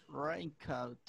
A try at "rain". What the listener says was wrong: Rain. Rain. Rain. Como que me dices una U. Como que me dices rain. Me estás metiendo tres vocales. Y nada más son dos.